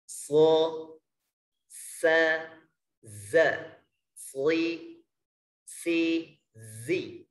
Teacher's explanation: yang pertama yaitu sifat shafir, artinya tambahan suara mendesis.